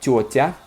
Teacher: Тетя ends in the ya, which makes the t, the second t, soft. So you want to keep it soft in the genitive or in the plural, right?